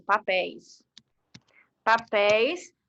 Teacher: tem um som aberto principalmente na vogal é então vai receber acento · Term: ditongo aberto